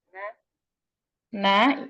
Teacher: ujung lidah bertemu dengan gusi atas